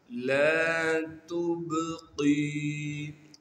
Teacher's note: یا مدہ ہونے کی وجہ سے قاف کو ایک الف کے مقدار کھینچیں گے۔ لا تبقی ولا، واو کو بغیر کھینچے پڑھیں گے، لام کے بعد الف مدہ ہونے کی وجہ سے لام کو ایک الف کے مقدار کھینچنا ہے۔ · وَمَا أَدْرَاكَ مَا سَقَرُ لَا تُبْقِي، لام کے بعد الف مدہ ہونے کی وجہ سے لام کو ایک الف کے مقدار کھینچیں گے، تا کو باریک کر کے پڑھیں گے اور تا کو آگے با ساکن سے ملا دیں گے، با پر قلقلہ کیا جائے گا یعنی آواز کو ہلائیں گے، قاف کو موٹا کر کے پڑھیں گے اور قاف کو آگے یائے مدہ سے ملا دیں گے جو کہ ساکن ہے، یا مدہ ہونے کی وجہ سے قاف کو ایک الف کے مقدار کھینچیں گے۔